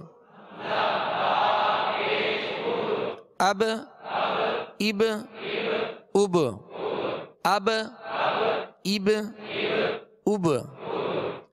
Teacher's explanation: با ساکن ہے اور با میں قلقلہ کریں گے، با حروف قلقلہ میں سے ہے۔